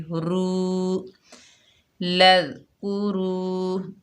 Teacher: واؤ مدہ ہے، 1 الف کی مقدار کھینچ کر پڑھیں گے، را پر پڑھی جائے گی، رو لذکروا۔